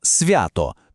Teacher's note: Тут в стає м'яким, зливається з наступним звуком.